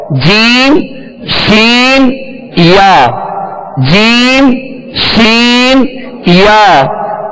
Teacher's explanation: جیم کا مخرج مخارج کی لسٹ میں آپ دیکھ لیجئے. زبان کے درمیان اور تالو کے درمیان سے جیم ادا ہوتا ہے